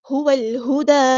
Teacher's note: لام یہاں پر لام قمریہ، اس کو ہم ظاہر کریں گے · واو کو ہم نے لام کے ساتھ ملا دینا ہے، حمزۃ الوصل ہمارا ڈراپ ہو جائے گا